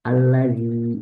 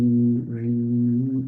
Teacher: Allazi, zal kasrohnya jelas, tapi ya sukunnya yang bikin dia panjang. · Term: harful mad